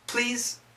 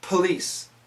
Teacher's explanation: Please has a Z sound. Police has an S sound.